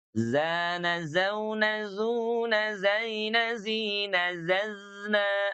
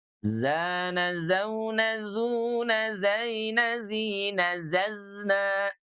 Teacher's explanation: Jadi huruf zai dari ujung lidah kita berada di belakang gigi seri bagian bawah.